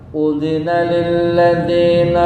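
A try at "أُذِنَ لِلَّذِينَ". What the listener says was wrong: Nah, masih campur e kan? Udzina lilladzi Ini harokat kasrah belum sempurna i ke i. Udzina lilladzina yuqataluna bi annahum zulimu.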